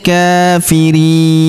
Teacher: Huruf ka kita panjangkan dua harakat karena terdapat alif kecil di atasnya.